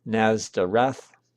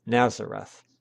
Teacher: the Greek accent is on the last syllable, Nazareth, while the Latin accent is on the second to last syllable